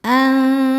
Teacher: lam jalalah dibaca tafkhim karena sebelumnya fathah, maka lamnya tebal. Anzalallahu, alif lamnya dinamakan alif lam syamsiyah karena alif lam menghadapi huruf syamsiyah yaitu lam, maka alif lam tidak dibaca atau dileburkan langsung ke lam berikutnya.